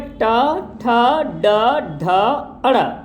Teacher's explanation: फिर ट वर्ग में आते हैं, तो ट वर्ग में ट, ठ, ड, ढ, अड़, इनको मूर्धा वर्ण बोलते हैं क्योंकि इनका जो ध्वनि होता है, जीभ का आगे वाला हिस्सा मूर्धा से आकर टकराता है।